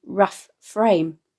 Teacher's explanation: a slight discordancy of two fricative f sounds here in immediate succession, i.e. rough frame, enhancing this image.